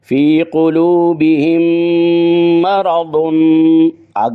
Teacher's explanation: قلوبہم کی میم کو مرض کی میم میں ادغام کر دیا ، اسی وجہ سے مرض کی میم کے اوپر تشدید بھی